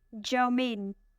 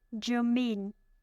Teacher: It has 2 syllables and the stress is on the second syllable.